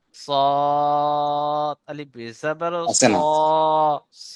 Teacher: গোল করে আওয়াজ মোটা পড়তে হবে আর এখানে আকার উচ্চারণ হবে না জবারে আকার উচ্চারণ আসে না